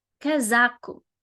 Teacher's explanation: So the highest is the one in the middle.